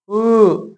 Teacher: उ यानी कि ये मुंह पिया से ठीक है उ पकड़ उ नहीं बोल पाएंगे इसको पकड़ के बिना पकड़े बोलिए उ ऐसे बोलेंगे यानी कि बिना ओष्ठ की सहायता से हम उ का उच्चारण नहीं कर सकते हैं